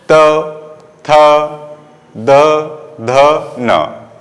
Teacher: त यानी दंत का, यहाँ आपकी जिह्वा है वो दंत से टकराएगी, आगे के हिस्से में, तो इसे दंत बोलते हैं। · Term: दंत वर्ग